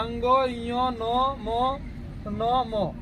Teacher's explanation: तो जो अंतिम लेटर है ना उसको बोलते हैं नाक से। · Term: नासिका